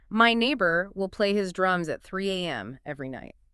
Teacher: the way you emphasize will in that sentence implies a certain level of annoyance or frustration